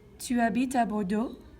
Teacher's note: I'm rising my intonation, okay, at the end. And rising your intonation is making that into a question, okay? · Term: rising intonation